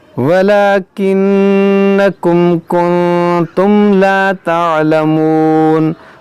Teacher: یہاں نون میں غنہ کریں گے، دیکھیں میم ساکن کے بعد کاف ہے، یہاں میم ساکن کے بعد لام ہے، تو یہاں دونوں جگہ اظہار شفوی ہوگا، یعنی یہاں پر غنہ نہیں ہوگا